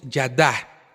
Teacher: Su segundo uso es como pronunciación de la hei como consonante. La hei final generalmente no se pronuncia en hebreo, pero si lleva un mapik, esta deberá ser pronunciada como una consonante suave, una H aspirada.